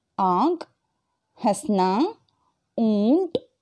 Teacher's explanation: अनुनासिक स्वर वे होते हैं जो स्वर मुख और नाक से बोले जाते हैं जिसका सूचक चिन्ह चंद्र बिंदु होता है, जैसे आंख, हंसना, ऊंट आदि.